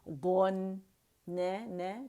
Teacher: بس یہ دھیان رکھنا ہے کہ نون پہ قلقلہ نہیں کرنا، نون ساکن جو ہے اس کا مخرج ادا کرنے کے بعد ہی آپ نے چھوڑنا ہے، ایک کاؤنٹ کے لیے جانا چاہیے